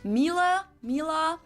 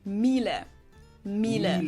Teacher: This is a German manufacturer of high-end domestic appliances, and it's not exactly pronounced wrong in English, but English native speakers usually say something like Miele, Mila. So it usually sounds more like an A in the end, whereas in German we say Miele.